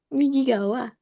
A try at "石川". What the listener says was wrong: Bukan Migigawa. Ini bukan Migi ya. Ini kanji batu. Ishikawa bisa. Ishikawa biasanya.